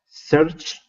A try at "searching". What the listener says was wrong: Yeah, that was good.